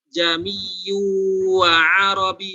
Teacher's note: Nah ini tashil berarti hamzah yang keduanya harus diringankan.